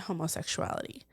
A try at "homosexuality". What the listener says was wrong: Homosexuality. It was a hard O.